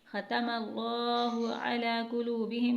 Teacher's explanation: کھڑی حرکت کو ہم نے تھوڑا سا کھینچا ہے، عین کو حلق سے ادا کیا ہے، پھر کھڑی حرکت کو کھینچا ہے اور ہا کو سینے سے ادا کیا ہے